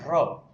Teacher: જ્યારે તમે ર બોલો છો ને ર ત્યારે જો ધ્રુજારી થાય છે તો આને પ્રકંપી ધ્વનિ કહેશું ર ને કેવો કહેશું પ્રકંપી ધ્વનિ પ્રકંપ થતું હોય એવું લાગે